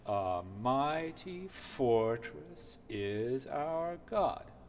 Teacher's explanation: it's almost every other syllable is stressed, beginning with an unstressed syllable